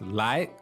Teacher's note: so this lai, second tone, that means come, right?